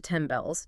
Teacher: The sound changes to M because M and B are both bilabial. They're both lip sounds.